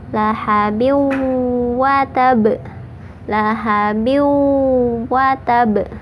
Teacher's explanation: dimasukkan sambil ditahan sampai masuk ke rongga hidung, ditahan 2 harokat. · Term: Idgham bigunna